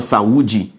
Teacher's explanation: palavra saúde veja aqui se eu for considerar o critério tonicidade saúde é uma palavra paroxítona e por que que ele é paroxítona porque a penúltima sílaba é a tônica